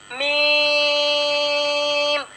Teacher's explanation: होठों से अदा होने वाला हर्फ है मीम। अच्छा, मीम का जो मखरज होगा वो आपने अदा होगा दोनों होठों के खुश हिस्से से मीम अदा होता है।